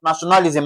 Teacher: Nationalism, and NA is stressed.